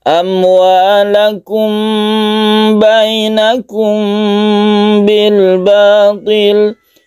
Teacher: Ini juga adalah ikhfa syafawi. Mim bertemu dengan ba. Cara membacanya yaitu kita dengungkan, kita panjangkan.